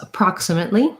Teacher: It's going to be a stopped T, and I'm going to go right into my L with an E vowel